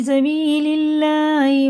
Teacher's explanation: اللہ کا لام زیر سے، دیکھیے زیر سے تو باریک پڑھیں گے